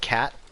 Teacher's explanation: it's probably an unreleased t just like in the american pronunciation of the word cat where we don't actually like release the t sound at the end